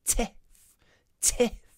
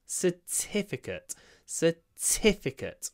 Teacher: The stress is on the T, but the I is not pronounced with our full voice because it comes between two unvoiced consonants.